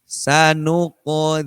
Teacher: Jadi qaf qalqalah, pantulan dari qaf, kalau dia di tengah, seakan-akan dia hidup, seakan-akan.